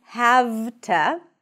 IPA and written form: hæv.tə (have to)